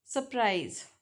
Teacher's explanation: So the first R is often deleted